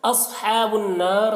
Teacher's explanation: صاد کو پر پڑھنا ہے اور صاد میں قلقلہ نہ ہونے پائے اس کا خیال رکھنا ہے۔ نار کے نون میں مشدد ہے، نون میں غنہ ہوگا اور یہاں پر الف مدہ ہے، یہاں پر وقف کریں گے تو را کو پر پڑھیں گے۔